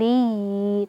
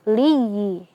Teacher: Ketika kita bertemu dengan huruf ya yang bertasydid, maka di sini ada yang namanya nabr ya, penekanan suara. Jadi kita tekan suara kita saat mengucapkan ee ya yang sukun ya.